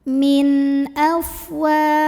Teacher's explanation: Maka cara membunyikan nun sukunnya ini adalah dibunyikan dengan idhar atau jelas. Jadi kalau nun sukun bunyinya n, maka ketika dibunyikan ya tetap saja n ya dan tidak ditahan. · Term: idhar halqi